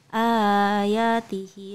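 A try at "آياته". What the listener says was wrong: Ayatihi, ianya panjang itu.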